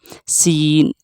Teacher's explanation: سین زبان کی نوک اوپر نیچے کے سامنے کے چاروں دانتوں کے کنارے سے ادا ہوتا ہے۔ زا اور سین کا مخرج ایک ہی ہے، صاد ایک ہی ہے، تو یاد رکھیے گا۔